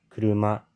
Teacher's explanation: If a word is flat heiban, there is no slash, as in kuruma, low, high, high.